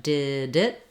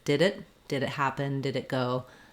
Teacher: The D almost jumps onto the word it. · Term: release D